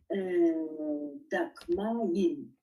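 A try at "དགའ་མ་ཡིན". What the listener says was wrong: Da Ma Yin. C'est pas Dagma Yin. Parce que sinon, ça veut dire Dagma Yin. Je suis Dagma. Non, non. Da Ma Yin. Là, il faut vraiment comprendre que chaque fois, on exprime une idée très claire. Da, je, Ma Yin.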